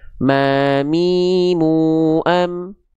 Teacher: Yaitu dengan cara apa? menyentuhkan bibir atas kita dengan bibir bawah kita ya. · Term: huruf mim